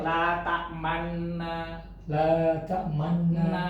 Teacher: Jadi suara man ditahan, kemudian monyongin ke depan. Man. Nah, Jadi isman itu, ismam itu artinya memonyongkan 2 bibir.